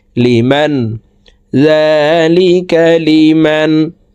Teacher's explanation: জবর মান নুন সাকিনের পরে ইজহারের হরফ খ আসছে এই কারণে এ নুন সাকিনকে গুন্না ছাড়া স্পষ্ট করিয়া পড়তে হবে